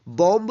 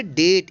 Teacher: टी से पहले आया है बी, इसलिए बी जो है यहाँ पे साइलेंट लेटर है